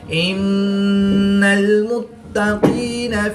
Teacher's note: نون مشدد میں ہمیشہ غنہ ہوتا ہے تو یہاں پر ہم غنہ آنی کر کے پڑھیں گے